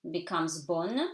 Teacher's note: N is reinforced, so it's not a nasal, becomes bonne, you pronounce E silent.